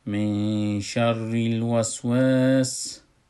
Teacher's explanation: نون ساکن است، پشت سرش حرف شین آمده، ما ای را اخفا میکنیم